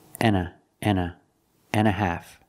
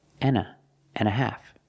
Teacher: Remember the H is silent, an hour, so together, an hour. And, we don't say and, we don't pronounce the D, we say n